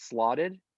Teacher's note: in the past tense, it's slotted. And the T surfaces as a flap